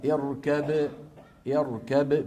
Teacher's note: بباء طبعا مقلقلة، كلما سكنت الباء لا بد من قلقلتها